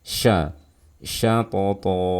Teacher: Dan kesalahan berikutnya ialah menebalkan suara huruf shin ya, terlebih saat bersebelahan dengan huruf isti'la